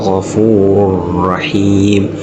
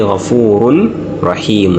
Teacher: Genda kukozesa aya eno egamba tugenda kukozesa aya eya tanwini egamba inna allaha ghafurur rahim inna allaha ghafurur rahim. Owulira nti tanwini eyingidde mu raa'u tetugambye ghafurun rahim nedda ghafurur rahim eyingidde nebuliramu ate tembaddeemu kuwuuna. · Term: idgham